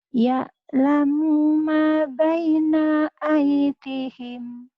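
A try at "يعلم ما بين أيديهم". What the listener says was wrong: Ya'lamu ma-nya panjang. Ya'lamu ma. Yang ya'lamunya enggak panjang. Panjangnya ma-nya. Ya'lamu ma baina aydihim.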